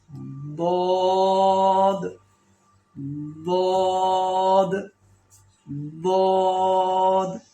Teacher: زبان کی دونوں سائڈیں، دونوں کنارے اور بالکل اوپر والے مسوڑوں سے لگیں گے